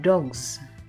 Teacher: to make it plural we can simply add s in the end of this word, so dogs, and it is pronounced by a little buzzing